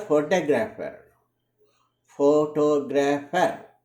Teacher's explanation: In the word photographer, photographer, the stress is on the syllable 2.